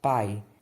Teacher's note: o som vai do mais forte para o mais fraco, ele decresce. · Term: ditongo decrescente